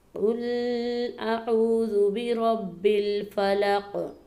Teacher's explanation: اس میں ہم نے اعوذ کی واو کو لمبا کر کے پڑھنا ہے، کیونکہ یہ حروف مدہ میں سے ہے.